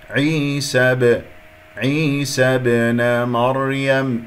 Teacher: الباء مقلقلة قلقلة صغرى في وسط الكلام